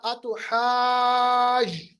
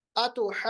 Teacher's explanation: इसी तरह अतुहाज, हाज लंबा कीजिएगा, 4 से लेके 6 अलिफ तक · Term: मद लाजिम कलमी